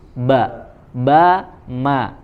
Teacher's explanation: lagi temannya huruf nun huruf mim itu makhrojnya di syafatan ya makhroj tempat keluarnya huruf mim itu di dua bibir sama seperti huruf ba